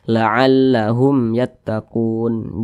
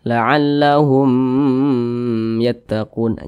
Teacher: huruf ya bukan huruf ba bukan huruf mim di sini berarti hukumnya adalah izhar syafawi dibaca jelas tidak berdengung jadi dibaca pendek saja la'allahum yattaquun jangan ditahan laallahum yattaqun jangan dipanjangkan seperti itu itu